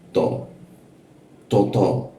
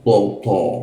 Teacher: Kalau th lebih tebal kalau thnya Indonesia tipis.